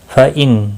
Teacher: فَإِنْ نون ساکن کے بعد حمزہ آیا ہے، یہاں پر اظہار حلقی ہوگا، اظہار ہوگا، نون ساکن کو ظاہر کر کے پڑھیں گے کیونکہ آگے حروف حلقی کا حمزہ آیا ہے۔